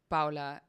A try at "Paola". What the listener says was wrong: You said it wrong. You said Paula. It's Paola, like Crayola, Paola.